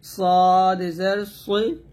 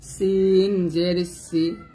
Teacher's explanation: সদ হবে মোটা সিন হবে পাতলা জিহ্বাটা নিচের দাঁতে লাগবে তবে সদ জের সৈ বলতে হবে মোটা